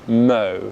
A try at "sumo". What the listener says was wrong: So it's not mo, it's the diphthong